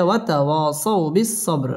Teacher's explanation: বা কলকলার হরফ ধাক্কা দিয়ে পড়তে হবে